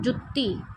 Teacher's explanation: ਤੁਸੀਂ ਇਹਨੂੰ ਇਥੇ ਅੱਧਕ ਲਗਾ ਤੀ ਤਾਂ ਤੁਸੀਂ ਪੜੋਗੇ ਇਹਨੂੰ ਜੁੱਤੀ ਜੋਰ ਪਾਤਾ ਯਾਨੀ ਤੁਸੀਂ ਦੋ ਵਾਰੀ ਜਜਾ ਇੱਕ ਤਰੀਕੇ ਨਾਲ ਸ਼ੋ ਕਰ ਰਹੇ ਹੋ